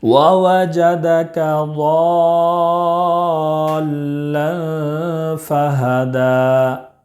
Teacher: ضاد میں مد لازم کلمی مثقل ہے، اس کو 5 الف کے برابر کھینچ کر پڑھیں گے ، اور لام میں اخفا ہوگا، اس لیے کہ 2 زبر